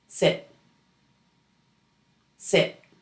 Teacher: The vowel in sit is relaxed. You relax everything in your face and your jaw. Make sure not to hold any tension in the muscles of your face, your lips, your jaw, or your tongue. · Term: short i, short I